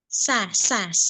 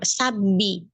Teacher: Sin pada sa, sofirnya, desisnya, belum, masih kurang.